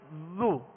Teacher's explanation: اب جب پیش ادا کریں گے ہونٹوں کو گول کر دیں گے زو، مگر حرکات کو بغیر کھینچے بغیر جھٹکا دیے معروف پڑھیں